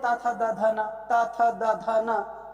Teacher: दंत स्पर्श, यानी कि जो जीभ होगी वो दांत को स्पर्श करेगी